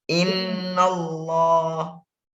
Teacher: nunnya itu ditahan. Jadi 2 rokat ditahannya